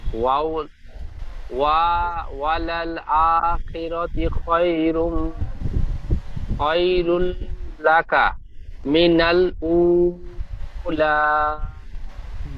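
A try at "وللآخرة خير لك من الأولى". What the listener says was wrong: জি, ওয়ালাল আখিরাতি হবে না, তার উপরে পেশ আছে।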